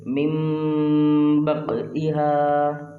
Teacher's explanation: نون کو میم سے بدل دیں گے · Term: اقلاب